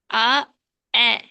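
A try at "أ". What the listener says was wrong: மாறி இடம் மாறிக்குது. இடம் மாறிக்குது. இடம் உங்களோட உச்சரிக்கிற இடம் மாறு தொண்டையில. நீங்க ஆலேருந்து தான் வரணும். இந்த இடம் வரணும்.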